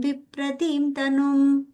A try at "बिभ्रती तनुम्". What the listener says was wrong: Bibratim, I'm hearing it. There is no ma there, just Bibrati Tanum. Varahim has the im. Bibrati, there is no im there. Bibrati Tanum, yeah. Okay, it's not there. It's only Bibrati. There's no im there.